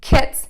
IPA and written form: kɪts (KITS)